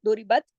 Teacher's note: रा यहाँ बारीक पड़ेंगी, क्यों, उसके नीचे जेर है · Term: रा बारीक